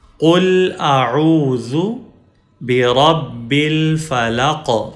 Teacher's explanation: قاف کے اوپر ہم کلکلا یا ایکو ساؤنڈ پروڈیوس کریں گے